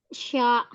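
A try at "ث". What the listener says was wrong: Sya, enggak huruf shin. Keluarkan ujung lidahnya. Ujung lidah jangan ditarik. Sa.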